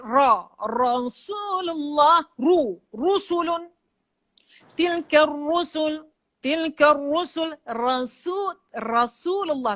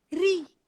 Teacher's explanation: Ra yang berbaris atas ditebal sikit.